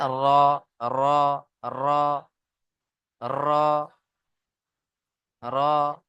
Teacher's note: জিভের আগার উল্টো পিঠ এবং তার বরাবর উপরের তালুর সাথে লেগে উচ্চারণ হবে